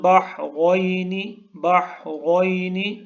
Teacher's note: ہا کو حلق کے درمیان سے نکالنا ہے، را کو پر پڑھنا ہے، اس کو موٹا کر کے پڑھنا ہے